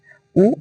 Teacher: इसका उच्चारण होठों से होता है